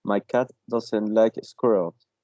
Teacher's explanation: I'm not sure, but I guess it's a progressive assimilation. In squirrels, the sound it's like z, should be voiced because it comes after an L sound.